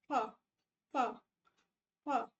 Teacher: lower lip plus अपर teeth lower lip upper teeth नहीं होना चाहिए ये फ हां अपर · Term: लेबियोडेंटल